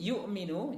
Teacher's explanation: yu'minu jangan sampai ditekan ya, sehingga yang lahir adalah huruf ain yu'minu, tapi biasa saja yu'minu. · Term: huruf hamzahnya